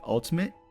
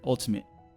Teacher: you can even drop the te it's like ultimate you stop the flow of air